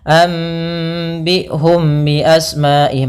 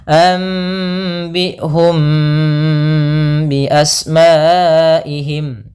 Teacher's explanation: membacanya suara mimnya ditahan dulu 2 harokat, tidak langsung anbi'hum bi asma'ihim, tapi ditahan dulu gunnahnya, anbi'hum bi asma'ihim. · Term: ikhfa syafawi